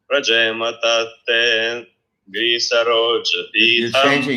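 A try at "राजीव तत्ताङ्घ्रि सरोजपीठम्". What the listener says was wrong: You're changing the melody. Rajema Tattengri Saroja Pitam.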